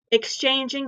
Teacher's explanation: exchanging has three syllables the accent is in the second syllable which is the root word